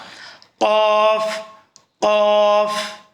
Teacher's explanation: وہ زبان کی جڑ جو ہے، یعنی زبان کا مول جسے ہم بولتے ہیں، اور اس کو تالو کے نرم حصے سے ادا کرنا ہے۔ تالو جو اوپر والا حصہ ہے، زبان کے اوپر والا جو حصہ ہے منہ کا، اس کو تالو بولتے ہیں۔ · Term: حروف لحویہ